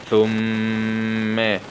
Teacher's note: من نطفة خلقه فقدره، من نطفة خلقه فقدره، فاء ضمة ثو، ميم شدة فتحة مع الغنة